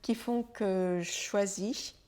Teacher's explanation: on a un son je suivi d'un son che qui font que je choisis donc le je et le Che deviennent presque le même son